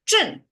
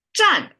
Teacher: the fallen tone has the most force because it's from higher pitch to lower pitch. It gives you this audio, fallen, almost like a water falling from high to low.